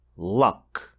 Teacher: so it is raised and pressing against the alvea ridge however the back of the tongue as you can see is raised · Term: dark L